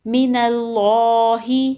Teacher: اللہ کے لام سے پہلے زبر ہے اس لیے اللہ کے لام کو موٹا پڑھیں گے۔